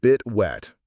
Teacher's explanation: The t at the end of bit is a stop t. We don't fully release it.